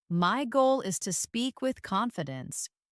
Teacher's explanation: Notice how my voice rises on goal and falls on confidence. It gives the sentence meaning and emotion.